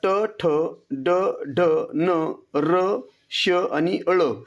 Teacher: तर यामध्ये पर्याय क्रमांक सी बघा, ट, ठ, ड, ढ, न, र, श आणि अळ हे म्हणत असताना या ठिकाणी आपला जिभेचा शेंडा टाळूच्या कठीण भागाला म्हणजेच त्या ठिकाणी मूर्धेला स्पर्श करतो, म्हणून त्याला मूर्धन्य असं म्हटलं जातं। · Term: मूर्धन्य वर्ण